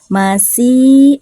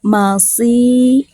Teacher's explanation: Kalau sod itu agak beda, terdengar agak tebal. Walaupun dalam keadaan kasroh tetap terdengar tebal ya. Masih dengan masih, yang kedua itu sin, yang pertama itu sod.